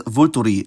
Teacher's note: notice how both -is are now pronounced